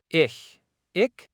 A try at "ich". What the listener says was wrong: Not quite ich. The ch is softer than a hard k. Do not close the back of your throat. Just bring your tongue near the middle of the roof and hiss gently. Ich.